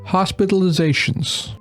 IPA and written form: ˌhɑspɪtəlɪˈzeɪʃənz (hospitalizations)